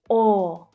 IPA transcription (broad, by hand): ɔː